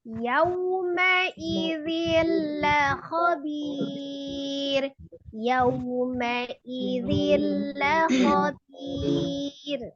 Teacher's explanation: Jadi jangan yauma ini enggak. Yau monyongkan tapi tidak dipanjangkan. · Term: madlin